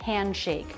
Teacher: the D after an N before a consonant, that D will usually be dropped. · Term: no D sound